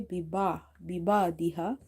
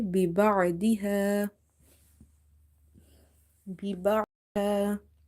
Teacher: Ba kasra bi, ba'in fatah ba, biba' duat kasra di, biba'di, ha alif fatah ha, biba'diha. Ain is from the middle of the throat. Try pronouncing it from exactly from the middle of the throat, because if you say biba diha, then it will replace itself with hamza.